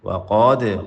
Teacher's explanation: وقاد، قاف موٹا اور دال پہ جھٹکا